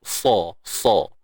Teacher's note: Sad ni sifat isti'ala, itbaq. Tebal. Angkat keseluruhan lidah kita ni. Sa. Yang penting jangan muncung.